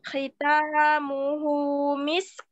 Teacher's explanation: huruf ketiga dari belakang yang berharokat hendaknya agak sedikit dihentakkan suaranya.